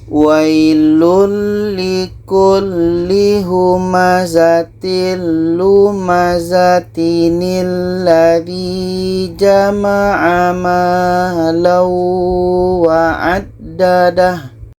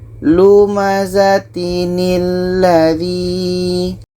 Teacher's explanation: tanwin ini kita buang satu barisnya, kita ganti dengan nun yang berbaris di bawah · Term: nun wiqayah